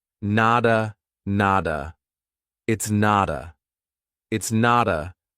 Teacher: we have a T between 2 vowels. So a native speaker is going to pronounce that as a soft D